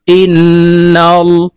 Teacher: হামজা নুন জের ইন ওয়াজিব গুন্না, হরকতের বামে নুনের উপরে তাসদিদ আছে, তাই আমরা এই হামজা নুনের সাথে গুন্নার সহিত পড়ব